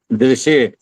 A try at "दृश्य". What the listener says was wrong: अभी मिक्स हो गया, कुछ और लंबा भी हो गया। नहीं, स आ रहा है, दृश्य।